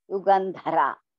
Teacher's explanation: First ga is alpa prana, then dha is mahaprana.